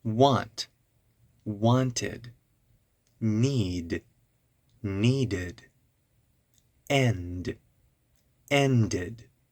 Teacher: first if the root word ends in a d or sound then we add a new syllable and it's pronounced id